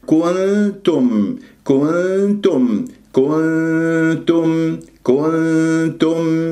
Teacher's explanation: احنا صفينا الغنة وما سحبنا ضمة الكاف إلى النون الساكنة والميم مظهرة. كنتم ت، ميم أسمعها، ولا أقول كنتم تو، خطأ، تو. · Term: إخفاء